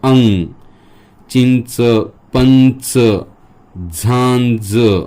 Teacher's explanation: या अनुस्वाराचा आवाज जो आहे तो अंग असा आहे आणि हे अनुनासिक आहे